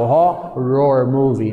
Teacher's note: E o R mesmo quando tem dois R's juntos, né, você usa aquele R retroflexo, o R de porta